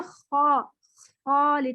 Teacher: سوائے اس کے کہ یہ مستعلیہ حروف ہے، ان میں اردو سے کافی مماثلت ہے. دوسری چیز جو اس میں امپورٹنٹ ہے وہ یہ کہ خا میں خرخراہٹ ہوتی ہے. خا تھوڑا سا نا بابلز بنتے ہیں.